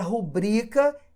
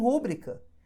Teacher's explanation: Por que que a palavra rubrica é paroxítona se a maior parte das pessoas fala rúbrica?